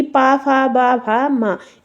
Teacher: जो पा आप बोल रहे हो तो ओठ जो है वो आपस में टच कर रहे हैं, बिना ओठ टच करे आप पा बोल लोगे, नहीं बोल पाओगे, इसीलिए ये आपके 2 वर्ड हो जाते हैं ओष्ठ वर्ड।